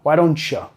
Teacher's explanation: reduce el pronombre you a su forma, toma el sonido vocal u y lo reduce a schwa